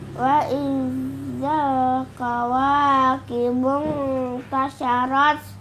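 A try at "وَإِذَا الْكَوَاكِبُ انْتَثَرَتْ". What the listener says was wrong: Tasa itu sa bukan sya. Tasarat.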